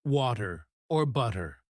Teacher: the flap T sound where the T sounds like a soft d